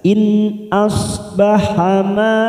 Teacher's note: ada mat yang bertemu dengan hamzah dalam satu kalimat mat wajib mutasil 4 harakat kita panjangkan